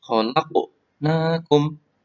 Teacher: Qafnya dibaca mantul karena bacaan qalqalah sugro